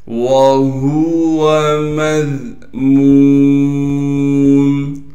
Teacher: واو کو صاف کر کے بغیر کھینچے پڑھنا ہے. ہا کو گلے سے نکالیں گے، گلے کا وہ حصہ جو سینے کی جانب ہے. میم کو ذال سے ملا دیں گے اس لیے کہ ذال ساکن ہے، اور ذال کو نرم کر کے باریک کر کے پڑھنا ہے.